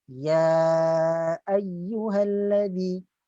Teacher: Makhraj hamzah ini berada di pangkal kerongkong